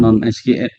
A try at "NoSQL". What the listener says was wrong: No SQL bukannya non SQL, yang nggak pakai SQL. SQL, not only SQL nyebutnya sih bukan bukan walaupun benar juga sih nggak pakai SQL. No SQL, not only SQL.